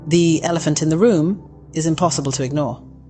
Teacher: Did you notice how the E in the flows smoothly into the vowel sound that follows?